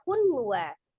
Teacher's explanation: Idgham artinya dilebur dari hun menjadi hu ya, langsung ditasdidkan ke huruf waw. Kemudian bi ghunnah dengan dengung. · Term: idgham bi ghunnah